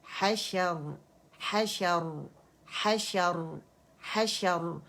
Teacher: اور را موٹا کیوں پڑا جا رہا ہے؟ کیونکہ جب اسے ٹیمپریری سکون ہم نے دیا، اس سے پہلے فتح آ رہی ہے تو را موٹا پڑا جائے گا